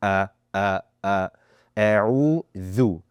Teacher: you want to make sure that we're listening to that 'ain, right? And the hamza should be clear and sharp.